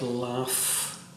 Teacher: the last three letters are u g and h but the last sound is an f sound